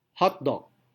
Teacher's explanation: Jadi hot tekanannya kuat, dog tekanannya juga kuat. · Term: primary stress